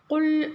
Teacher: காஃப் பார்த்தீங்கன்னா நல்ல உள்நாக்குல இருந்து கரெக்டா சொல்லணும்